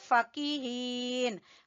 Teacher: فا کو بھی چھوٹا پڑھیں گے، کاف کو بھی چھوٹا پڑھیں گے، ہا کو کھینچیں گے